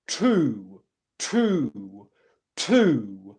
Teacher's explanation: they pronounce the T sound in a rounded position based on the vowel sound that comes afterwards